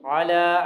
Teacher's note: علی صراط مستقیم، علی عین کے بعد لام ہے، لام پر کھڑی زبر ہے، لمبا کر کے پڑھیں گے